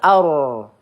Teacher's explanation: ar ro sukun sebelumnya ada harakat fathah maka kita baca tebal ya.